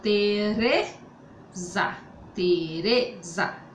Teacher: o Ré é mais forte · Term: sílaba tônica